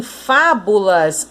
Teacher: A sílaba mais forte é o Fá, porque é ela que está com acento.